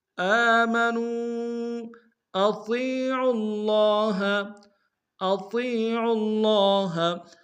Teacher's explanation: آمنوا اطیعوا اللہ، اطیعوا اللہ، اطیع میں حمزہ کو نم سے ادا کریں گے، طا کو یا کے سامنے لیں گے، یا مدہ کے انداز میں کھینچیں گے، طا کو موٹا ادا کریں گے، عین کو لفظ اللہ کے لام کے سامنے لانا، تشدید زور دیں گے، اگر لام کے اوپر کھڑا زبر ہے ایک انداز میں کھینچیں گے۔